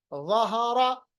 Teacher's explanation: ज़ा को नरम भी पढ़िए और थोड़ा होंठों को गोल भी कीजिए। ज़हरा, ज़ाल को आप अपोजिट करने के लिए ज़ा को हम मोटा पढ़ेंगे।